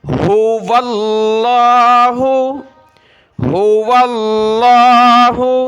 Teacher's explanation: لفظ اللہ سے پہلے والے حرف پر زبر اور پیش ہو تو لفظ اللہ کو موٹا کر کے پر کر کے پڑھنا ہوتا ہے۔ یہاں لفظ اللہ سے پہلے والے حرف واو پر زبر ہے تو ہم نے لفظ اللہ کو پر کر کے موٹا کر کے پڑھنا ہے